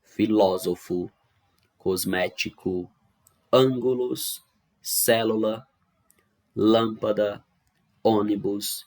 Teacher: a antepenúltima sílaba é a mais forte · São palavras cuja sílaba tônica é a antepenúltima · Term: proparoxítona, proparoxítonas